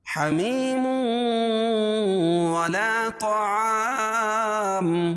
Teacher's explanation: یا، واو، میم اور نون ہے۔ تو یہاں تنوین کے بعد واو آ رہی ہے، تو یہاں ادغام کریں گے لیکن غنہ کے ساتھ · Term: ادغام مع الغنہ